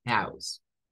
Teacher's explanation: adopta el sonido au y una S silbante o sin vibración al final.